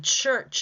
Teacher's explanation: at the beginning of church and at the end of church, no vibration.